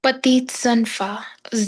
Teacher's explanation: The sound of Z comes in between. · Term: liaison